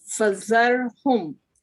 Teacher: Ra is strong because of fatha before it.